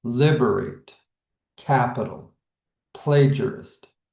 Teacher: So the dactyl is the opposite. we get the stress of the first and then two unstressed syllables